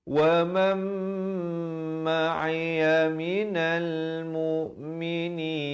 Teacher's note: Asalnya waman. Tapi bila nun mati bertemu mim, hukumnya masuk berserta dengung dua harakat.